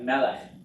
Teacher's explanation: Accent on the first syllable, two segals. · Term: segolate nouns